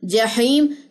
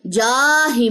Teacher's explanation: جہیم جاہیم نہیں ہے کیونکہ حرکات کو لمبا نہیں کرنا